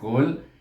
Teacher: apabila kita menyebutnya Qaf itu, iaitu pangkal lidah kita terangkat. Pangkal lidah itu betul-betul bertentangan. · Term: huruf Qaf